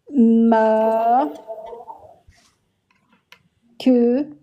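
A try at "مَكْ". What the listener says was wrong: Oui, mais ne prononce pas ce con. C'est pas que. Mac. Ne prononce pas le fatha. Mac.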